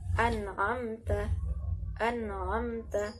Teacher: nunnya dibaca jelas, tidak dimasukkan kepada ain ataupun tidak didengungkan